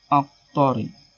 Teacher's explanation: Cara membacanya harus bergerak dan berbunyi seperti membalik huruf qa. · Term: qalqalah sugra